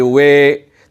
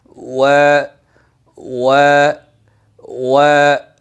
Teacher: আমি যদি বলি ওয়ে, তাহলে তো এমালা হয়ে যায়।